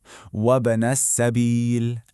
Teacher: That little bounce on the b, that's our qalqalah rule in action.